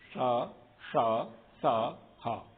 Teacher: लेकिन ये जो 4 वर्ण हैं, इन 4 वर्ण के समय पर थोड़ा सा रगड़ करके निकलती है हवा, इसलिए गर्म अधिक हो जाती है। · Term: ऊष्म वर्ण